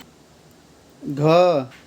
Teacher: घ, इसमें भी लंबी आवाज़ आ रही है घ, तो ये भी क्या हुआ आपका महाप्राण